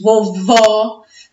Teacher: as sílabas mais fortes as sílabas tônicas são as últimas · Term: palavras oxítonas